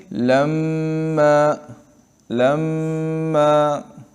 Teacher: ایک الف کے ایک برابر ہے۔ تو جب میم مشدد ہو تو اس میں ہم نے ایک الف کے مقدار رکنا ہے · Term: غنہ